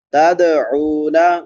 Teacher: دال پہ قلقلہ ہوگا کیونکہ حروف قلقلہ میں سے ہے۔